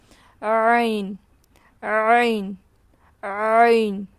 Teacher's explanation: عین حرف حلقی میں سے ہے. عین کو حلق کے درمیان سے ادا کریں گے